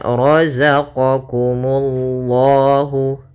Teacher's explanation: pada lafal ra tebal, ra-nya roza, za besar